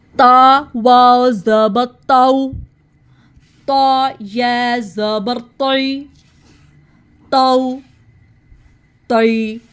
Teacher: جب زبان کی نوک اوپر دانتوں کی جڑ کے ساتھ لگتی ہے, جب ہم اس کو ہیوی پڑھتے ہیں تا کو, تو جو ہماری زبان ہے وہ درمیان سے اوپر کو اٹھتی ہے